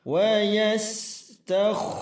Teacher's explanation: huruf kha ketika sukun itu tetap tafkhim tebal